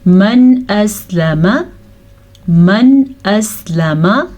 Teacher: من اسلم نون ساکن کے بعد حمزہ حروف ہلکی میں سے ہے، تو نون ساکن کو ظاہر کریں گے اور ادھر رکیں گے نہیں، کسی قسم کا غنہ نہیں کریں گے